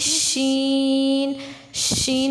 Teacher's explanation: زبان، وسط تالو اور وسط زبان دونوں آپس میں اٹیچ بالکل نہیں ہوتے، تھوڑا سا فاصلہ رہتا ہے تو شین پڑھا جاتا ہے. ان کو حروف شجریہ بھی کہتے ہیں. · اگر شین پہ دیکھیں تو شین میں پھیلاؤ آتا ہے آواز میں. شین، یہاں سے آپ باہر نکلتی ہے، منہ سے باہر ہوا باہر نکلتی ہے.